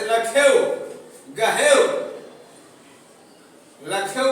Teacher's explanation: जैसे लखेव, गहेव, लखेव बोला गया तो ख पर एक मात्रा यानी बड़ा तो है, गुरु तो है, लेकिन उसका उच्चारण जल्दी हो जा रहा है, इसलिए इसको हम गुरु मानते हैं।